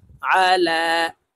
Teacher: ওয়ালা, ইয়া জবর ইয়া, হা দদ পেশ হুদ, ওয়ালা ইয়াহুদ, দদ পেশ দু, ওয়ালা ইয়াহুদ্দু। আইন জবর আ, আইন হরফকে হলকের মধ্যখান থেকে চাপ দিয়ে উচ্চারণ করতে হবে।